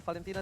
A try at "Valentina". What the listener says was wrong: Bukan kayak gitu dong manggilnya. Kalau Valentina aja, nggak usah Valentina gitu. Nggak usah. Kenapa diperpanjang gitu intonasinya?